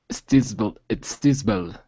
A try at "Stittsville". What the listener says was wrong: Stittsville. No, the T's there. Stittsville.